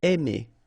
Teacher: when you combine A and I, then you get the sound E. Really open, E.